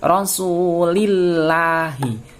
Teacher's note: apabila ada lafal Allah didahului oleh harokat kasrah, membacanya harus tipis. Lafal Allahnya ini menjadi la. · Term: tarqiq